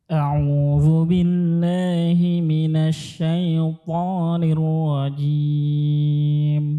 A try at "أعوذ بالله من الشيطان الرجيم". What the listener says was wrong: Berarti kan asyai, tidak boleh ditebalkan syaitan, syaitan ya.